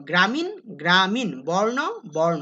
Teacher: উচ্চারণের সময় মূর্ধন্য সবসময় দন্তন্যের মতো উচ্চারিত হয়